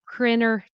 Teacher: casual spoken English follows the example of dropping the T sound completely